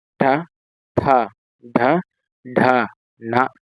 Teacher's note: ನಾಲಿಗೆಯನ್ನ ಹಿಂದೆ ಚಾಚಿ ಬಾಯಿಂದ ಮೇಲ್ಭಾಗವನ್ನ ಸ್ಪರ್ಶಿಸಿದಾಗ ಉಚ್ಚಾರಗೊಳ್ಳತಕಂತ ಅಕ್ಷರಗಳು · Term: ಮೂರ್ಧನ್ಯ ಅಕ್ಷರಗಳು